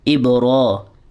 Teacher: را کو ہم نے کیوں لمبا کیا ہے؟ حروف مدہ کی وجہ سے